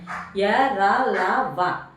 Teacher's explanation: మన నాలిక సుతభాగం వెళ్లి మన అంగిలిని తాకుతా పలుకుతాం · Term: అంతస్థాలు